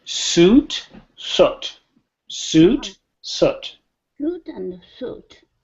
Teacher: So watch my lips. When I say suit, they pucker up really good. Suit, soot. Soot, they come back a little bit.